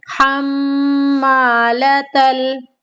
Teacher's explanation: اب یہاں پر میم کا قاعدہ ہو رہا ہے، میم مشدد ہے تو اب ہم نے یہ سیکھنا ہے کہ میم کا غنہ ہمیں کیسے ادا کرنا ہے۔ دونوں ہونٹوں کو آپس میں ملا دینا ہے اور ہمیں 2 سیکنڈ تک بیٹھنا ہے